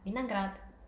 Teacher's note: 비나그라드라는 단어에서는 강세가 뒤에 아에 떨어지잖아요. 그래서 앞에 있는 이 오 알파벳은 아로 발음이 돼서 비나그라드라고 발음을 하시는 게 맞습니다.